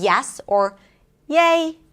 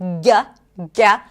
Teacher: it's where the tongue goes very, very close, but not close enough, not too close, to the hard palate. So the back of the tongue rises up. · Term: Y sound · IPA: /j/